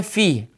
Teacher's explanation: اور اس کے بعد یا ہے، یا حروف شجریہ میں سے وسط زبان وسط تالو سے ادا ہوتا ہے